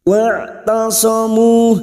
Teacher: Wa'tasamu huruf ain jangan samakan dengan hamzah. Huruf ain memiliki sifat tawasud dan jahar. Huruf ain suara antara tertahan dan terlepas ketika mengucapkan huruf. Wa'tasamu. Tasamu duma diikuti waw sukun 2 harokat kita panjangkan.